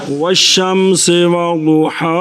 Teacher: تو لام کو شین کیا شین کا شین میں ادغام تو کیا بن گیا والشمس وضحاہا.